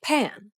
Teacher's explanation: this is the aspirated version of the p sound as it occurs in the word pan